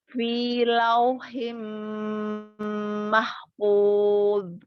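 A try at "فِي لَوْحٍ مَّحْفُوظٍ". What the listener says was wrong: Dha di akhir dijelaskan. Fi lauhim mahfuz. Fa-nya juga dijelaskan ya. Fa-nya. Nah ya, berikan sifat ininya juga. Gitu ya, jelas. Fi lauhim mahfuz.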